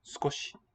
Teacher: Skoshi, where the first and last vowel have devoiced.